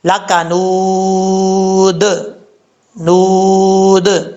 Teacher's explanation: جب وقف کریں گے دال ساکن ہو جائے گا، یہاں پہ قلقلہ ہوگا